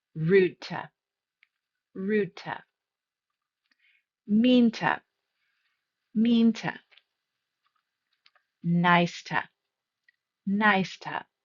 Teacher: To is going to soften because it's unstressed and it's going to sound like a t.